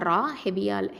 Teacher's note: அடுத்தது ரா ஃபத்ஹா ரா, heavy letter. ரா அப்படிங்கிறது தரஃபுல் லிசான், நுனி நாவு எழுத்து.